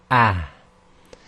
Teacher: the deeper chesty sound is really more emphasized when the ha itself is sakin. Otherwise you can just relax and say the ha quite normally like you do in English, with a tiny bit more emphasis on the chest.